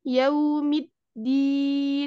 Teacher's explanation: kalau yang syiddah seperti Dal ya yaumiddin Nah ini tidak ada alirannya